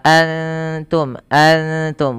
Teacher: Antum di sini ada bunyi bacaan yang dinamakan dengan Ikhfa Hakiki suara nunnya disamarkan kepada huruf ta